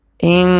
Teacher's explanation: نون پہ تشدید ہے، غنہ ادا ہوگا، ایک الف کے برابر کھینچیں گے